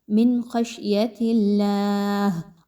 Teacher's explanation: من خشیت اللہ، اللہ کے حرف سے پہلے تا کے نیچے چونکہ زیر ہے اس لیے اس اللہ کے حرف کو بھی باریک پڑھا جا رہا ہے